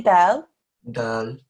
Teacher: the tip of your tongue went up to the bridge of your mouth just behind your front two teeth